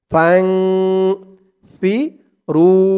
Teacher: ইকফা গুন্নাটা নাকের ভিতরে লুকিয়ে করতে হয়। ফাং ফি রু, রু ১ আলিফ টান, ফাং ফিরু।